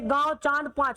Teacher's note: अनुनासिक जिसमें नाक से कम और मुख से ज्यादा वायु निकलती है